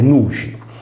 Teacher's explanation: nel campidanese risolve nella fricativa palatale